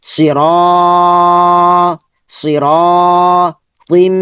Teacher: এভাবে আমরা ফোকাস করে করে পড়ব তাহলে আমাদের জন্য সহজ হবে তার সাউন্ড হবে নরমাল সাউন্ডলাটা লম্বা হবে লামের উপর খারা জবর লা ইটা এখানে উচ্চারণ হবে না ইটা খালি হরফ আলা আলা সি আর র টা লম্বা হবে জবরের পরে খালি আলিফ মাদের হরফ